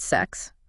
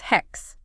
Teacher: an H sound in ancient Greek so a word that started with a like a sharper like s sound it softened to more of a breathy H